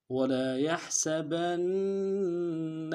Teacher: وَلَا يَحْسَبَنَّ ولا میں واو کو نون سے ادا کریں گے، لام کے ساتھ الف مدہ ہے، ایک الف دار میں کھینچیں گے، یا کو ہا کے ساتھ ادا کرنا ہے، ہا کو گہرائی سے ادا کریں گے، سین کی سیٹی باریک ہوگی